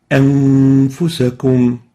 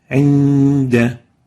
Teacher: You hide the oral articulation of the nun and preserve the nasal articulation of the nun, preserving or maintaining ghunna characteristic, the nasal tone, for 2 time units. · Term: ikhfa